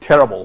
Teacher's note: pronounce L with the tongue farther back and lower down in the mouth, resulting in a more emphatic sound than Arabic lam